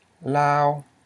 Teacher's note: This is a high tone because you have a low consonant, o, plus a live syllable because it ends in a semi-vowel, o, ow, okay?